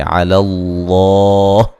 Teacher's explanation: اظہار ہے، فتوکل کاف کو باریک پڑھیں گے، علی اللہ یہاں لفظ اللہ کو موٹا ادا کریں گے، لفظ اللہ سے پہلے زبر ہے اور یہ مد اصلی ہے، وقفاً بڑی مد کے ساتھ پڑھ